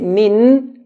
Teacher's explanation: To make the noon clear, we touch the tip of the tongue to the roof of the mouth.